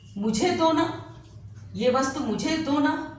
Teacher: दोनों के बीच में हम क्या देते हैं, एक क्षणिक विराम देते हैं, जिसके कारण अर्थ स्पष्ट हो सके